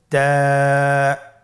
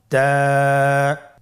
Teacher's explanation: জিহ্বার আগা সামনের উপরের 2 দাঁতের গোড়ার সঙ্গে লাগিয়ে উচ্চারিত হয়।